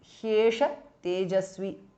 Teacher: ದ ವಿಸರ್ಗ is been dropped because of ಸಂಧಿ